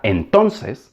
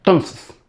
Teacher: En consecuencia, en habla rápida, los hablantes suelen pronunciar tons. La primera sílaba, en, de menor valor, se elimina. La segunda, ton, de mucho valor, se mantiene, y la tercera, ses, de poco valor, se pronuncia sin vocal.